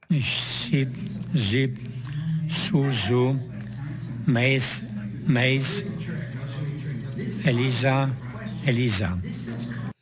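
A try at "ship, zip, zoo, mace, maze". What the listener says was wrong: You're having a little bit of trouble differentiating that S and the Z. So I think lesson 20 you want to work on.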